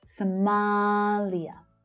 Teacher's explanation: The second syllable is the strongest.